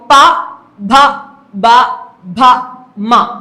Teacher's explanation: വ അപ്പ ഇതെല്ലാം ഏതിൽ ഉൾപ്പെടുത്തുന്നു ആ ഓഷ്ട്യം എന്നുള്ള വിഭാഗത്തിൽ ഉൾപ്പെടുത്തുന്നു അപ്പോ ചുണ്ടുകൾ തമ്മിൽ ചേരുകയോ അകലുകയോ ചെയ്യും ഈ അക്ഷരങ്ങൾ ഉച്ചരിക്കുമ്പോൾ